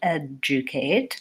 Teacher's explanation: in the word educate there's no J and there's no G but we have the just sound